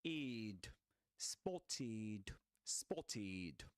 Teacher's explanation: as it ends with a sound, with a consonant sound, t, the ed ending is pronounced id, id, spotted, spotted.